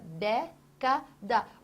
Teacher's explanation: Você tem tonicidade em dé.